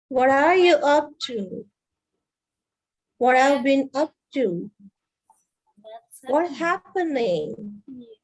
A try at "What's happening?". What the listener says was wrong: What's happening? It's not happen. There's no p. It's like what's happening. It's a flow. What's happening?